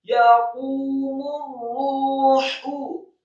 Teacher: qafnya dibaca marfu atau dhammah dua harokat tafkhim tebal karena setelahnya ada wawu sukun. Kemudian mimnya dibaca marfu atau dhammah satu harokat.